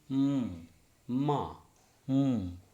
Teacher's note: your lips are closed, your mouth is closed, and the sound is coming through the nose. Yes, so that's why these are called nasals.